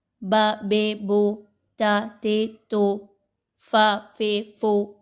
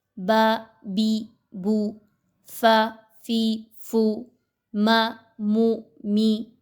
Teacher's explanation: با زیر بی درست ادائیگی ہے، با زیر بی، لیکن اکثر اوقات لوگ اس کو پڑھتے ہیں با زیر بے۔ با پیش بو صحیح ادائیگی ہے، اور لوگ اس کو پڑھتے ہیں با پیش بو، بے بو۔